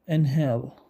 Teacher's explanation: يتم انتاج هذا الصوت بين الحبال الصوتيه في في في الفراغ الموجود بينهما لذا يطلق عليه ساكن انجلش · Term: صوت الاتش, صوت ال H